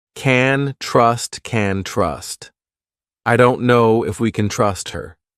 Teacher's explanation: you hear trust more because it's the main verb and can, which sounds like can is very short.